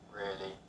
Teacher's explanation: a flat tone can indicate boredom